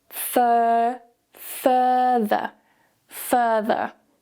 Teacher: the second word is with a more relaxed vowel sound. · So notice that we don't pronounce any of the R sounds.